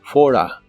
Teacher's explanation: Si pronunciamos rápido esta expresión, las palabras for y a se juntan.